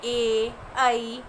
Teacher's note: ए, ऐ इनका उच्चारण स्थान कंठ एवं तालु दोनों होते हैं। यानी ये कंठ और तालु, तालु होता है अपने मुंह का ऊपर का भाग, इन दोनों के बिना हम ए और ऐ का उच्चारण नहीं कर सकते, इसलिए इनका उच्चारण स्थान क्या कहलाता है? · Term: कंठ तालव्य